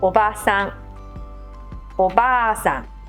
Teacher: The difference between the respectful words for someone's aunt and someone's grandmother is just the length of the first a.